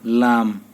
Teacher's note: জিহ্বার আগার কিনারা সামনের উপরের দাঁতের মাড়ির সঙ্গে লাগাইয়া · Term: আট নাম্বার মাখরাজ